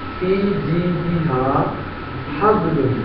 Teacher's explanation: پہلی جو ہا ہے وہ انتہائی حلق ہے سینے سے آئے گی